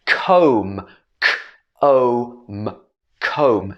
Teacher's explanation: this b is at the end of the word but we don't say the b